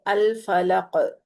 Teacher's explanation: کاف پور بھی کریں گے، کاف پہ کلکلا بھی کریں گے